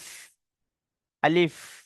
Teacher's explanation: মুখের খালি অংশ হতে উচ্চারিত হয় আলিফ। আলিফ, এই যে বলছি আলিফ, দেখুন একটা হাওয়া পার হচ্ছে খালি অংশ থেকে।